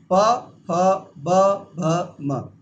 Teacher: इन सभी का उच्चारण कहां से होता है? होठों से।